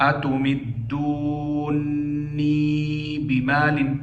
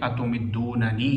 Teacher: امام یعقوب کے نزدیک اتمدونی بمال پڑھیں گے، یعنی ادغام کریں گے، اور باقیوں کے لیے اظہار ہی پڑھیں گے · نون کا نون کے ساتھ مع مد لازم کیا کریں گے؟ ادغام کریں گے